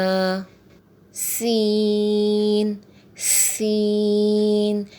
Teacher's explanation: سین سیٹی والے حروف میں سے ہے، اس کو ادا کرتے ہوئے سیٹی نکلے گی